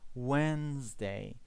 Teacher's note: The D is silent here.